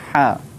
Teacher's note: ha tu dia kena keluar angin. Keluar angin yang nipis.